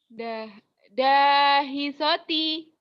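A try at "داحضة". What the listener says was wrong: do ada titiknya, dahidoti. Ini bukan so, kan ada titiknya.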